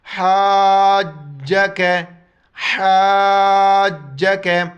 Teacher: حا کو گلے سے ادا کرنا ہے، مد کو کھینچنا ہے، اور جیم کو سختی سے پڑھنا ہے، اس کے اوپر شد ہے